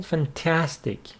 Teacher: Fantastic, with the stress on the second syllable